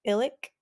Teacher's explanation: it has glottal stop at the beginning and that clicky k at the end